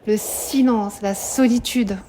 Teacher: Regardez, aussi la répétition du son consonantique, donc allitération de « ce ». Le silence, la solitude.